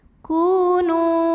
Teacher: karena ada wau sukun yang sebelumnya domah maka huruf Kaf kita panjangkan dua harakat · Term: Mad Thobi'i